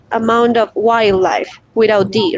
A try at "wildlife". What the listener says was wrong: wild. So you want to just say that D. Wild.